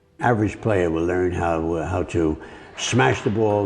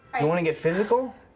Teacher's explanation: It's when the L sound in the coda of a word final syllable, basically the L sound after the last vowel of a word, is pronounced like a W or a vowel sound. We can hear it in speech and how he says ball, like ball, in this clip. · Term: L vocalization